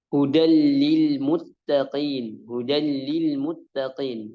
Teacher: dimasukkan tanpa dengung langsung ke hurufnya tapi tanpa dengung tanpa tanpa dengung enggak dengung sama sekali jadi langsung ke lam